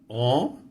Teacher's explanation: Notice that I'm not pronouncing the N. I'm closing my nose, trying to simulate the N. O. I'm not saying an. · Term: nasal sounds